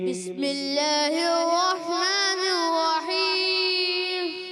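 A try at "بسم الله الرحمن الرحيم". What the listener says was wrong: اچھا، الرحیم میں ہون گول نہیں کرنے. بسم اللہ الرحمن الرحیم.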